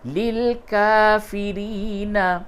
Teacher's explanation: کاف کھڑا زبر کا اور یا دونوں کو کھینچ کر کے پڑھیں گے